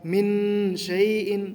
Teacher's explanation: من شیء، نون ساکن ہے، نون ساکن کے بعد شین ہے جو کہ حروف اخفاء میں آتا ہے، لہٰذا یہاں پر بھی غنہ ہوگا